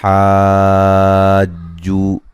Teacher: ہا پہ جو مد ہو رہی ہے یہ مد لازم ہے، 5 سے 6 الف کے برابر مد کریں گے